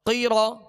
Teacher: دو زبر تن درجتن قاف زیر قی را زبر را قیرا قاف کو پر پڑھیں گے دو نقطے والا قاف ہے اور یہ حروف مستعلیہ میں سے را کو پر پڑھیں گے